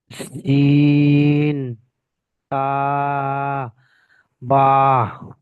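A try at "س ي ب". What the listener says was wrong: সিন তা পড়লেন, তার নক্তা দুটি উপরে থাকে আর ইয়ার নক্তা দুটি নিচে থাকে, এখানে ইয়া পড়বেন।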